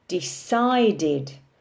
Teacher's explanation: When we say decide in the present simple tense, the emphasis is on the second syllable, decide. But when we turn it into the past simple, decided, we have an additional syllable on the end and the stress is on the second syllable.